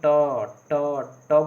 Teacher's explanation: आपका जीभ जो है मूर्धा के सामने टच होगा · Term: मूर्धा से बोलते हैं